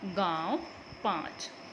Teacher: मुंह और नाक दोनों की सहायता से बोले जाने के कारण इन्हें अनुनासिक कहा जाता है